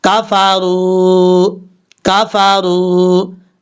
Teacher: پر یہ جو کاف ہے اس کو بریک پڑھیں گے، اور را کے بعد جو واو ہے اس واو کو لمبا کریں گے کیونکہ یہ واو مدہ ہے، ایک الف کی مقدار لمبا کیا جائے گا ، را کے اوپر پیش ہے، پیش ہونے کی وجہ سے